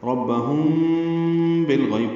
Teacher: ربہم بالغیب پڑھیں گے، دونوں ہونٹوں کو بالکل قریب لے آئیں گے اور اخفاء کریں گے. بالغیب لام ساکن پہ اظہار قمری ہے، غین پر ہے، غین یا لین ہے، نرمی سے ادا ہوگا. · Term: اخفاء شفوی